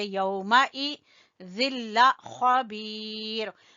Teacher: ख्वा को पुर पढ़ेंगे और बा को खींचेंगे या मद्दा की वजह से